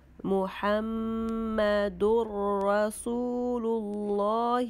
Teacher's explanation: There is gunna because mim has shadda.